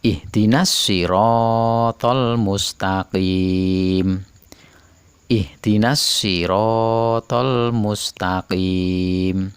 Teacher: Sod dot toh Za lam dan Nun cara membacanya adalah dengan tidak menampakan bunyi bacaan Al tetapi meleburkannya pada huruf setelah Al · Sirotol dibaca langsung, alnya tidak terbaca, tapi langsung pada huruf shod. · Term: Idgham Syamsiah, idgham syamsiyah